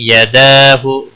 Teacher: دال کے اوپر کھڑی زبر ہے، ایک الف کے برابر کھینچ کر پڑھیں گے